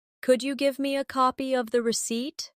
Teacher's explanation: Could you becomes could ya in casual speech.